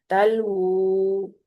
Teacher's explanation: اس کو ہونٹوں کو گول کرتے ہوئے واو کو ادا کرنا ہے، واو کے الٹے پیش کو بھی